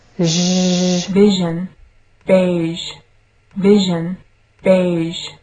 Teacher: the tip and the blade of the tongue is elevated into contact with the sides of the palate and teeth, leaving a flattened midline groove along the upper surface of the tongue